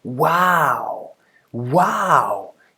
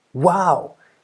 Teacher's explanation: This is what comes pretty close to what is the falling tone in Thai.